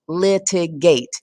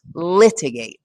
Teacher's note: the stressed syllable in the word litigate is the first syllable